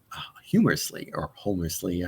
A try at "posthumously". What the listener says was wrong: Posthumously. The H is silent.